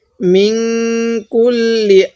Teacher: এই নুন সাকিনের মধ্যে গুন্নাহ করব কারণ এই নুন সাকিনের পরে কাফটি হলো ইকফার হরফ এজন্য আমরা